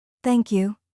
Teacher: when you say thank you, let your tone go slightly down at the end.